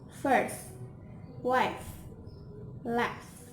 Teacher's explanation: by the upper teeth and lower lip, and the air is through the narrow channel, and do not vibration or voiceless, labiodental, fricative